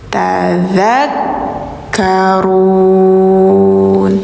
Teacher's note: dza lidahnya ditempel gigi atas dza kayak digigit ya